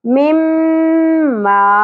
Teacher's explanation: میم مشدد غنہ ہوگا اور الف حرف مدہ ہے، ایک الف کے برابر کھینچنا ہے